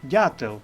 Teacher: в корені слова ДЗ варіант г не проходить дятел тому що дь м'який бо далі йде наступна літера Я - вона пом'якшує попередній приголос